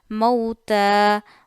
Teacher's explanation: تا پہ کھڑا زبر ہے ایک الف جتنا کھینچیے